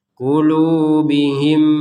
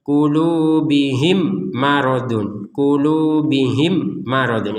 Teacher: Di rongga hidung kita itu ketika bilang him itu dengungnya 100%.